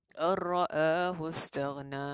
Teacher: So hukumnya ialah idgham bi ghairil gunnah, tanpa dengung, tak ada dengung di sini.